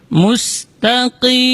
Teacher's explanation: Itu ta-nya tipis. Kemudian huruf qaf dibaca dari aqsal lisan, di pangkal lidah.